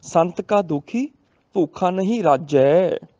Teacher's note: ਰਾਜੇ ਦੀ ਬਜਾਏ ਰਾਜੈ, ਜੱਜੇ ਨੂੰ ਦੁਲਾਵਾਂ, ਰੱਜਣ ਦੀ ਗੱਲ ਹੈ, ਇਸ ਕਰਕੇ ਰਾਰੇ ਤੇ ਥੋੜਾ ਜਿਹਾ ਦਬਾਅ ਪੈ ਜਾਏਗਾ